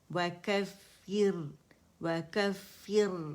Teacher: را کے مخرج پہ جائیں گے، باریک را ہے، ٹھیک، مرقق.